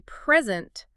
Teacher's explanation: If I say present, stress on the first syllable. It's a gift.